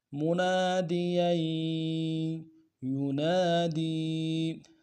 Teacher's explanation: یا کے اوپر تنوین ہے، تنوین کو اگلے یا کے اوپر یا کے ساتھ ملائیں گے، تشدید ہے، زور دیں گے